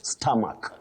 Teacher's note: with that O taking what we call the mid-central sound stomach, not stomach that we hear around us.